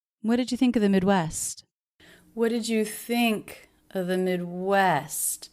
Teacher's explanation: think and Midwest the most stressed there